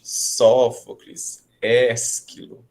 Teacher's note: prestando atenção no acento, ele vem na antepenúltima sílaba, então ela tem que ser a mais forte.